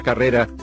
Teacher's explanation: La palabra carrera lleva la mayor fuerza de voz en la penúltima sílaba